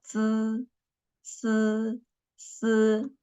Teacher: our tongue should be flat, and we just put our tongue behind our upper teeth